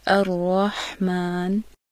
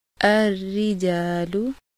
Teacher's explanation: रॉ पर जब ज़बर या पेश हो तो रॉ मोटा पढ़ा जाता है, जैसे अर्रहमान। और अगर रॉ के नीचे ज़ेर हो तो इसकी बारीक अदायगी की जाती है, जैसे अर्रिजालु।